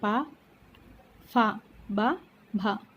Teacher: ఇవి పలికేటప్పుడు ఓష్ట్యం అంటే పెదవుల సహాయంతో పలుకుతాం కాబట్టి ఓష్ట్యాలు.